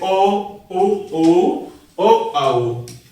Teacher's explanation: पहला होता है वृत्ताकार। जिन स्वरों का उच्चारण करते समय ओष्ठ अर्थात जो हमारे होठ होते हैं ये अधिक या कम गोल आकार बनाते हैं वे स्वर वृत्ताकार कहलाते हैं।